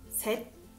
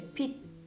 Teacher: L'ultima cosa per oggi: alcune consonanti, quando si trovano in posizione di pacim alla fine della parola, non hanno la loro pronuncia originale, ma si pronunciano come una T, che però non è marcata, ma appena accennata, come se la lingua si bloccasse prima di far uscire il suono.